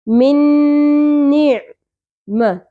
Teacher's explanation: یہاں پر غنہ کا role implement ہوگا، نون زیر عین ساکن، عین کو اچھے سے حلق کے وسط سے نکالنا ہے